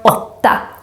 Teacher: On the other hand, if we have more than just one consonant coming after the å, then the sound becomes short, more of a o sound. A little bit like the Spanish o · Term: short version of the o